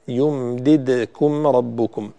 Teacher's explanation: الدال ساكن وليس متحرك، فبالتالي لا تضميه تقولي يمددكم، لا هي ساكنة.